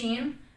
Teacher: جیم والا مخرج ہی شین والا ہوگا، یعنی زبان کے درمیان والے حصے کو بالمقابل اوپر تالو سے لگانا ہے، ٹھیک ہے؟ جیسے ہم نے جیم پڑھا ہے، یعنی زبان کا درمیان والا حصہ اوپر تالو سے لگانا۔